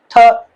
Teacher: टंग आप ऊपर पैलेट के साथ लगाते हैं